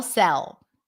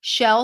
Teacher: the S is a bit more like there is a hiss there s the tongue is more forward versus sh where it's further in the back